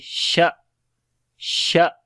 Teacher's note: hamza comes with the shidda quality, like the discontinuation of our sound